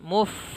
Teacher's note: fa-nya sempurnakan, muf ada angin dikeluarkan